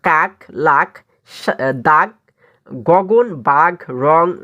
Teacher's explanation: জীভের পিছনের অংশ উঁচু হয়ে আলজিভের মূলের কাছাকাছি নরম তালু স্পর্শ করে জীবামূলীয় ব্যঞ্জন উচ্চারিত হয়। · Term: জীভামূলীয়